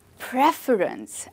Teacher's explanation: No, we stress on the first syllable